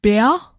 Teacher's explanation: it sounds like mumbling an A sound at the end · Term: end R